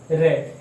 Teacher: रे का उच्चारण करेंगे तो हमारी जीव्या में कंपन होता है, ऐसा लगता है कि ये व्यंजन हमारी जीव्या के कहीं आसपास इधर उधर लटका हुआ है, तो इसके उच्चारण में कंपन प्रतीत होता है। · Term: प्रकंपित